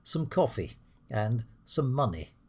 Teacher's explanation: We don't say 'some' we say 'sm coffee' and 'sm money' because English is a stressed-timed language. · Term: weak form